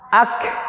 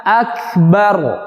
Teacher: aqsal lisan mengeluarkan dua huruf qaf dan kaf, yang kedua-duanya dari aqsal lisan nempel ke langit-langit. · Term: makhraj kafnya